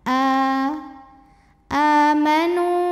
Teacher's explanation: harakat alladzina a a mad badal karena ada Hamzah yang dipanjangkan hamzahnya ini adalah Alif dengan harakat fathah panjang maka dibaca panjang a-nya dua harakat